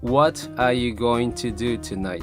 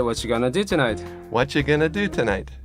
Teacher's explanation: What are you becomes watcha. Going to becomes gonna. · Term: liaisons